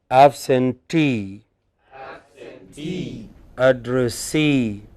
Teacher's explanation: Here the suffix itself is stressed.